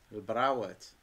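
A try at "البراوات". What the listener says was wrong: El brawat. On roule le R. El brawat. Bras.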